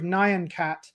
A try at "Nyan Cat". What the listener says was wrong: Nyan Cat. It's not Cyan Cat. It's Nyan Cat.